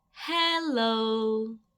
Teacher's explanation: the vowels are a little bit elongated